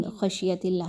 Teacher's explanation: یہاں پر ہم اظہار کریں گے، نون کی آواز کو بڑا کلیئر پڑھا جائے گا